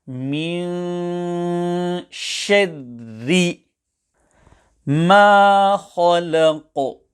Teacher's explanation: Both of the ra must be pronounced empty mouth as follows: min shadri ma khalaq. Here the kha will be pronounced full mouth. The qaf will also be pronounced full mouth, as well as with qalqalah. However, care should be taken to ensure that the lam before the qaf is not pronounced full mouth due to its proximity with qaf, which is a full mouth letter.